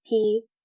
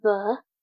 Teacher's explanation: So voiceless, so P vocal cords will not vibrate, and then the voiced V would.